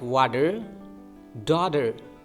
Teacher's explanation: when letter T is between two vowels uh like we have to pronounce it like a soft de